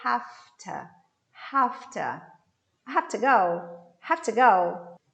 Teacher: You see, I stress have and I stress go.